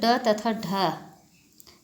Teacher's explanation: फिर है उत्क्षिप्त व्यंजन। इन वर्णों के उच्चारण में जीभ उठकर झटके से नीचे गिरती है